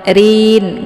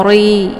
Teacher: ini ra ini dibaca tipis karena ra berharokat kisrah, yaitu bacaan tarki. Jadi nggak boleh terangkat pangkal lidahnya ke langit. Rin nggak boleh dibaca ori ya.